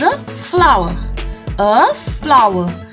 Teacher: the r will be silent and the stress will not be on the W